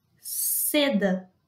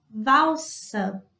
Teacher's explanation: Se o S estiver no começo de uma palavra, depois de uma consoante, ou se forem dois S's, o som vai ser esse som da serpente, que não vibra a garganta.